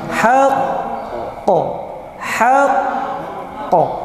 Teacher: Ditekan dulu baru dipantulkan. Nggak boleh langsung. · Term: Akbar